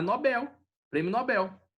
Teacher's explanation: São oxítonas, então é Nobel, prêmio Nobel